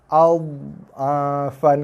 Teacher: Dha tak keras. Dia lembut, ibarat cushion tebal yang empuk.